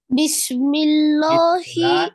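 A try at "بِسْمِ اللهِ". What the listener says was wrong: লহি না, বিসমিল্লাহ, এটা পাতলা হবে,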